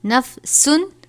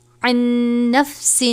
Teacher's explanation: تنوین ہے، اس کے بعد عین ہے، حروف حلقی میں سے غنہ نہیں کریں گے